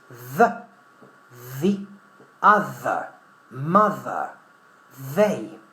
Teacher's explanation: it's a fricative consonant th with voice